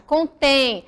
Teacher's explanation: contém o tem a sílaba mais forte